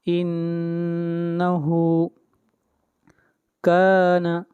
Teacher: نون مشدد ہے اس لیے نون کے اوپر غنہ ہوگا، آواز ناک میں جائے گی